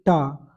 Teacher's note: टा का मतलब है कि जीभ को उल्टा करके बोला जाता है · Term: मर्दा